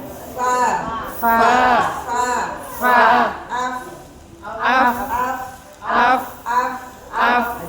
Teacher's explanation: Jadi ada keluar udara tapi terhalang bibir nempel ke gigi ujung gigi ya. Ini umpama bibir ini gigi nempel nempel ya.